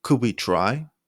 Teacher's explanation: Rising tone to make it sound uncertain.